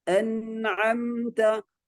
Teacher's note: Ingat, nun sama mim sakinah itu sifat gunnahnya bukan hanya ditunaikan ketika mereka bertasydid atau nun musyaddada atau mim musyaddada, tapi mereka tetap ditunaikan dalam keadaan izhar pun. Nun sukun itu tetap ditunaikan sifat gunnahnya.